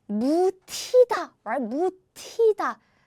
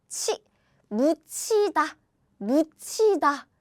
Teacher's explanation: the 디귿 plus he becomes 치, as in 치, 묻히다, 묻히다.